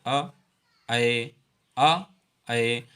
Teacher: अर्ध विब्रत स्वर जिन स्वरों के उच्चारण में मुख द्वार आधा खुलता है उन्हें अर्ध विब्रत स्वर कहते हैं। जैसे अ, ए, आ, ए, अर्थात आ और ए बोलते समय हमें मुख पूरा नहीं खोलना पड़ता है, हमारा मुंह पूरा नहीं खुलता है, इसलिए इन्हें अर्ध विब्रत स्वर कहते हैं।